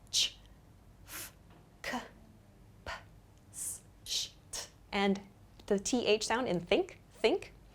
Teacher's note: the unvoiced consonant sounds, meaning the consonants that we make without using our vocal cords, are ch, f, k, p, s, sh, t, and the th sound in think, think.